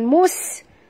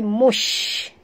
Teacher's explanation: huruf shim sini sifatnya tafashi. Apa maksud tafashi? Ya, iaitu angin yang berhamburan keluar. Mush, ya, bukan mus tapi mush, ya, sesuai dengan huruf shim, ya.